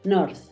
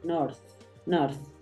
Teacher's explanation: Aquí la puedo estar simbolizando con una Z para que tú sepas que la razón es, como está al final, no tiende a escucharse tanto ese golpe de D, sino se tiende a escuchar más el golpe de la Z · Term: fonema de la TH